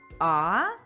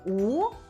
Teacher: коли ми вимовляємо звук а рот широко відкритий А при вимові звука у губи витягнуті уперед трубочкою